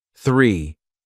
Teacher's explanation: The number 3 starts with that special English sound, with the tongue between the teeth.